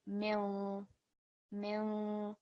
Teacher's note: we're going to produce a light ghunna sound, so a light nasal sound, and we're going to hold that sound for at least 2 seconds. So this will be mil, mil, slight nasal sound.